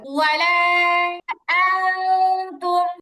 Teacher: নুন সাকিনের পরে তা আসছে, আর গুন্নাটা পাতলা হবে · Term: ইকফার গুন্না